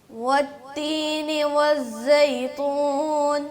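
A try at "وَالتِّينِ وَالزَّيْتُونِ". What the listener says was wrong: ہاں تون نہیں ہوتا، یہ تون ہے تا کے ساتھ. ہاں، اب یہ تا میں نا تو کی اسمیل آ رہی ہے تھوڑی تھوڑی، تو نہیں تا. اور ناک میں نہیں پڑھنا اس غنے اس مد کو نا، زیتون نہیں، زیتون.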